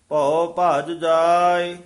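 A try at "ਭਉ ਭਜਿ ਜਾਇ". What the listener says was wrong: ਭੱਜ ਜਾਏ, ਇਹ ਭੱਜ ਪਦ ਜਿਹੜਾ ਕਸ ਕੇ ਉਚਾਰਨ ਕਰਨਾ ਹੈ। ਭਉ ਭੱਜ ਜਾਏ।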